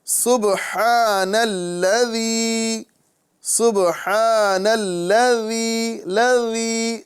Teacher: زبان کا سرا اور اوپر کے دانتوں کے اندرونی کنارے سے ادا ہوگا، نرمی سے ادا کریں گے۔ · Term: ذال